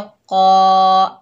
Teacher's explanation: ये अलिफ मद्दा है, एक अलिफ की मिकदार खींच कर पढ़ेंगे, कौफ को मोटा पढ़ेंगे, हुर्फ मुस्ताला में से है